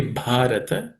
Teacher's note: in that word Bharata, bha is also aspirated consonant, is the fourth letter in the per varga or per class of consonants.